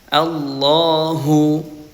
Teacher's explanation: Dan lamnya dibaca tebal.